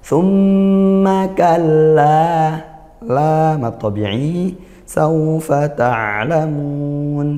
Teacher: mim bertasdid hukumnya gunah dibaca dengung ya dengungnya yang lama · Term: gunnah